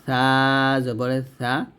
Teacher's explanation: ছা টা যখন উচ্চারণ করবো জিহ্বার আগা উপরের দাঁতের আগার সাথে লাগে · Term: সাটা